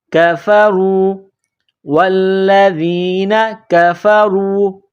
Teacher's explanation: را کے اوپر پیش ہے تو را کو موٹا کرنا ہے، را کو واو کے ساتھ پلس کرنا ہے، را واو پیش رو، کفروا والذین کفروا وکذبوا وکذبوا.